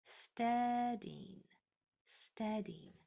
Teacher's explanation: with the accent on the first syllable